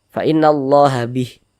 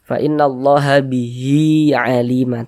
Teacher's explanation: namanya adalah mad silah qasirah, panjangnya 2 harokat. Jadi mad silah qasirah itu tanda panjangnya ini berlaku ketika kita wasolkan.